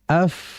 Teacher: Sehingga aliran panjang ini harus dikolaborasi dengan hamsnya tadi. Jadi mengalir disertai dengan desisan. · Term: huruf fa